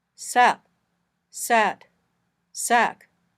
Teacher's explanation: At the end of a word, they may be pronounced very quietly. Your lips or tongue block off the air, but they may not open at all.